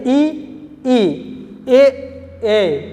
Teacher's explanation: अग्र स्वर यानी जीभ के अगले हिस्से से